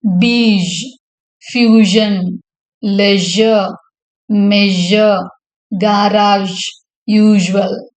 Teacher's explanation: Ish is a voiced post-alveolar fricative.